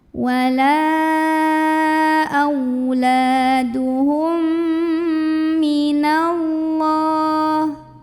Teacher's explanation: mim pertama lebur ke mim kedua, masuk. Sambil dengung dulu, ditahan bunyi emnya kurang lebih 2 harokat. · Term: idgham mimi